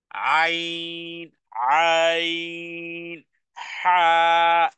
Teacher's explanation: আইন আর হা কিন্তু একই জায়গা থেকে, হলকের, আমাদের হলকের মধ্যখান থেকে উচ্চারণ হয়।